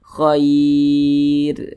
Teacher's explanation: Ada huruf ya sukun, maka huruf ro-nya itu dibaca tipis, dibaca tarkik.